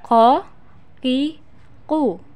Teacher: keluar dengan menyentuhkan pangkal lisan dengan langit-langit bagian belakang perhatikan call Kiku dalam posisi mati maka terdengar suaranya memantul bak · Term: huruf k